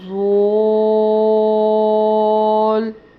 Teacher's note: مد ہونے کی وجہ سے 5 الف کے برابر لمبا کرنا ہے